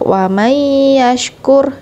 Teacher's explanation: Di sini ada idgham ya. Jadi dengung dan dimasukkan langsung ke huruf ya-nya.